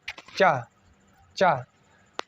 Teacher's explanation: चा वर्ण का उच्चारण स्थान जो है ये तालु होगा